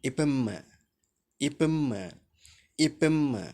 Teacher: எவ்வாறு பிறக்கின்றன என்று பார்க்கிற போது, மேல் வாய்ப்பல்லினுடைய உதடு, கீழ் வாய்ப்பல்லினுடைய உதடு, மேல் இதழும் கீழ் இதழும் ஒன்றாக இணைகிற போது இந்த இப் இம் என்கிற ஒலிகள் தோன்றுவதை நாம் காண முடியும்.